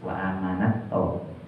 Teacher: Udah tak sukun ketemunya to, maka desisnya hilang. Wa amanat to.